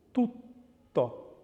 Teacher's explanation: The T has the same sound, but it is held for longer in the double version. So, tutto. But you can see there's actually no sound in it because it's unvoiced.